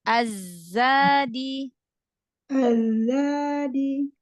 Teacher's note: Ujung lidahnya jangan nempel ke gigi. Agak mundurin.